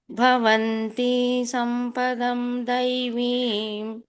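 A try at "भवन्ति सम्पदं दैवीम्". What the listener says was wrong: ಇಲ್ಲಿ ಭವಂತಿ ಇಳಿಬೇಡಿ ಮಾತಾಜಿ, ಹ್ರಸ್ವ ಇದೆ. ಭವಂತಿ ಸಂಪದಂ ಇಮಿಡಿಯೇಟ್ ಆಗಿ ಸಂಪದಂ ತಗೊಂಡ್ಬಿಡ್ಬೇಕು.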